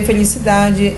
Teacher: Felicidade é uma paroxítona, onde a sílaba tônica está no dá.